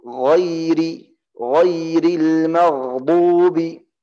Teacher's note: Ini huruful ghain sifatnya rikhwah. Harus ada suara.